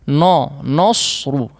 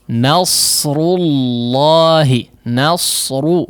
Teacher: Huruf nunnya ikut menjadi tebal